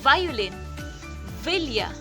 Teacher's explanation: V, voiced labiodental fricative. May tunog dahil gumagalaw ang vocal cords.